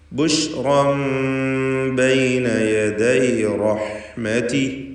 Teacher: റാഹിൻ്റെ തൻവീൻ ഇഖ്ലാബ് ചെയ്ത് ശേഷം ബാ വന്നതുകൊണ്ട് ഇഖ്ലാബ് ചെയ്ത് മീമാക്കി മാറ്റി മണിച്ചുകൊണ്ട് ഉച്ചരിക്കുക.